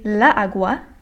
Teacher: I would have to say two A's next to each other, and both of these A's are accented, so they have the emphasis, because la is only a one-syllable word, so of course the emphasis lies on the A, and of course the natural emphasis or the natural accent in agua is in the first syllable.